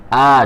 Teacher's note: hamzah itu tempat keluarnya yaitu tenggorokan pangkal